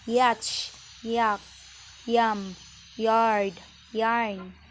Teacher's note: The alveopalatal semivowel Y. Initial. Yach, yak, yam, yard, yarn.